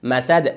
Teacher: اگر اینجا وقف کنیم قلقله میشه قلقله وسطی چون حرف قلقله در آخر کلمه قرار گرفته و ساکن میشه